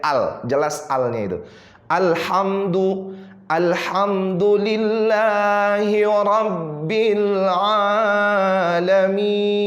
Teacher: lam bukan huruf Qalqalah tidak boleh ada pantulan disitu